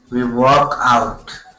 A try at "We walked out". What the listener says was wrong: Okay, make sure to pronounce that ED ending, walked. We walked out.